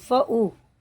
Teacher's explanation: یہ مد منفصل ہے، اسے جو ہے بھی ہم 3 سے 4 تک کھینچ کے پڑھیں گے